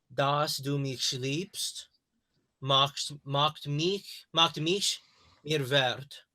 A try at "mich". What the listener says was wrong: Mich. It's not sh. It's not sh. It's somewhere in between. It's like you're blowing air. It's like a snake hissing. Mich.